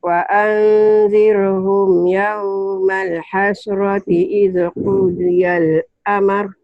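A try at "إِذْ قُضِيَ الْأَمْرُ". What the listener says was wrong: Amr bukan amar. Amar putusan. Amr.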